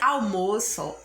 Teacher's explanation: A palavrinha almoço, a sílaba tônica é o mó.